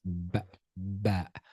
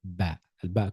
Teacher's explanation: The sound comes from the lips closing gently. Close your lips ba when you close your lips together join join your lips gently.